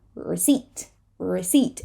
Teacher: we do not say the P receipt receipt and it is not recept right it is the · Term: silent P